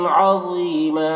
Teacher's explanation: یہاں پر وقف کریں گے تو ایک زبر کے ساتھ الف پڑھیں گے